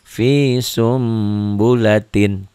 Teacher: jadi bunyi Nun matinya berubah menjadi mim mati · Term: iqlab, iklab